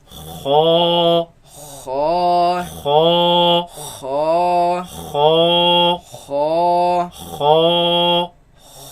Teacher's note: You can feel it in the back of the mouth. It comes from the roots of the tongue, root of the tongue against the uvula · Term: first heavy letter